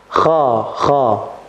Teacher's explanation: Kha itu tidak menempel, akan tetapi hanya terangkatnya lidah. Kha, begitu. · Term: isti'la